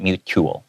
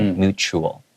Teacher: even though it has a T, it's kind of pronounced more like a CH sound